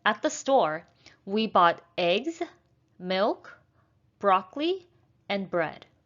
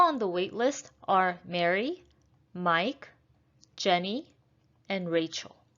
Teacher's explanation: when you're reading a list of three or more things we're going to use rising intonation for everything on our list except the last one so we're going to have rising and then falling intonation for